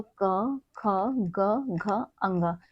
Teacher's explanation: यानी कि हमारा क वर्ग, क वर्ग हमारे कंठ से बोला जाता है, यानी कि कंठ से इसकी ध्वनि आती है।